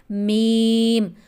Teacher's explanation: میم کا مخرج ہے، دونوں ہونٹوں کے خشک حصے کو آپس میں ملانے سے ادا ہوتا ہے۔